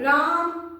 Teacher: दूर से पुकारने में ना थोड़ा स्वर बढ़ाऊंगी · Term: प्लूत स्वर